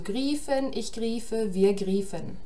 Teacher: der Stammvokal im Infinitiv und im Präsens ein langes I ist